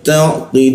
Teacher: Qilu, nah ini ada lu di bawah hidung, lu bertemu waw dan nun. Waw dan nun dimatikan seolah-olah muncul bendera, kita panjangkan 3 ketukan